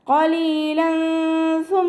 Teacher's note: ഖാഫ് ഇസ്തിഅലാൻ്റെ letter ആണല്ലോ, ഉയർത്തിയിട്ട് ഉച്ചരിക്കുക